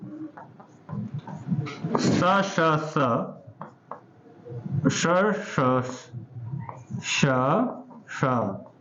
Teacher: स श श श और स अघोष होते हैं, ह सघोष होता है